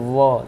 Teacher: दांत और ओठ दोनों टच होगा, ये क्या हो जाएगा दंतोष्ठ, दांत और ओठ से।